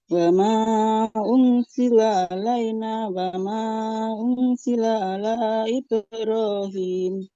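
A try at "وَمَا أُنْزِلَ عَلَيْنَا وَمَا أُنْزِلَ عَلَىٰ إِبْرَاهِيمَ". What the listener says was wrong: Coba diulang Ibu huruf zainya. Za. Za. Enggak sa. Za. Kalau kita tuh kayak ngomong Zahra, Zaitun. Nah, za. Zakat. Bayar zakat. Za. Zazizu. Coba zakat. wa. Nah, jadi sama kayak Z. Wa ma'unzila.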